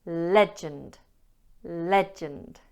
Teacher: legend has 2 syllables and the stress is on the first syllable